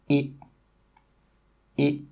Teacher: little bit wider than the last sound it it my lips are still quite flat and my tongue is at the front of my mouth but it's still not touching the top of my mouth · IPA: ɪ